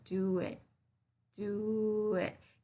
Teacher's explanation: I'm linking do it. I'm adding here an extra sound between do and it.